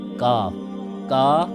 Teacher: کاف کا مخرج ہے زبان کی جڑ اور اوپر کا تالو